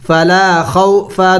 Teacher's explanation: خو حروف لین میں سے ہے لمبا نہیں کرنا